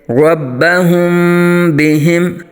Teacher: یہاں میم ساکن کے بعد با رہا ہے تو اخفاء شفوی کا قاعدہ ہوگا، غنہ کریں گے